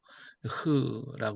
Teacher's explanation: 목구멍에 이제 바람이 슉 나와야 돼요 그렇죠 목구멍에서 바람이 슉 나오면 그 나오는 소리가 으 하다 이렇게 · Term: 바람이 지나가는 소리